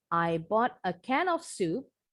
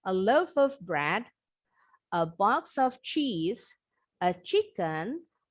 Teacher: kata yang di antara koma, itu intonasinya naik.